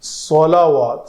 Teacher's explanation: سواد کو پر کریں گے، پتلا نہیں رکھیں گے، نہیں تو سین بن جائے گی